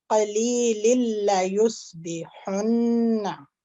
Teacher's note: यहाँ पर तनवीन आ रही है, तनवीन या नून साकिन के बाद अगर हरूफ यरमुलून में से लाम आ जाए तो यहाँ पर इदगाम बिला गुन्ना होगा, यानी कि बिल्कुल ये मर्ज हो जाएगा, तनवीन की नून साकिन की आवाज नहीं आएगी। तो इसको हम टाइम भी नहीं लगाएंगे, लंबा नहीं करेंगे।